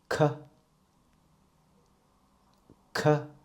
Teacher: When you pronounce K first, please make sure the back of the tongue is lifted against the soft palate, and then you can feel a puff of fire coming out of your mouth. So it sounds like K.